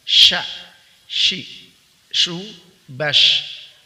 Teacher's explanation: Di sini ada yang baru ya, di huruf huruf shin ya, sya ya, itu at-tafashi, yaitu udara berhembus di dalam mulut ya.